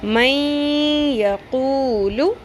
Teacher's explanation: نون ساکن کے بعد یا ہے. اتنا آپ کو فیل ہو گیا کہ یہاں پہ ہم نے اس کو ملاتے ہوئے غنہ کرتے ہوئے لمبا کر کے پڑھنا ہے